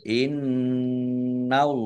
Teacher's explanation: nun tasdid, bacaan gunah atau mendengung, ditahan biar tampak dengungannya. Allahnya dibaca tebal karena harokat di depannya fathah.